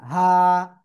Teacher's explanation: হা, গলার শুরু থেকে এটা উচ্চারণ হবে। এক আলিফ টান হবে।